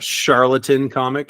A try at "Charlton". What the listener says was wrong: Charlton comic. Yeah, Charlatan. Yeah, the fake comic book. You said charlatan comics, like they're like a fake, like Charlton. Like Charlton Chew.